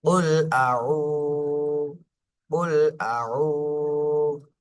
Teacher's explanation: পেশের বামে জজমালা ওয়াও, এটা মাদের হরফ, এক আলিফ টেনে পড়তে হবে